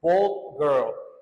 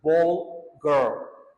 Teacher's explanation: The D sound is deleted from the sentence. Instead, it's pronounced bold girl. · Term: Elision